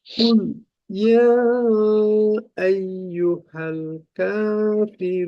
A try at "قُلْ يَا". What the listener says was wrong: আচ্ছা এই কুল বলে লামে আওয়াজটাকে বন্ধ করে দেওয়া যাবে না। আওয়াজের ধারাবাহিকতা এটাকে ধরে রাখা, যেমন কুল ইয়া এরকম ভাবে লামকে মাখরাজে একটু ধরে রাখা। কুল ইয়া কুল ইয়া এভাবে। আওয়াজটাকে বন্ধ করে দিই, যেমন কুল ইয়া, আওয়াজ বন্ধ হয়ে গেল, এই ক্ষেত্রে আমাদের তাওয়াসুদ বাদ পড়ে গেল। তো এটা একটা সমস্যা।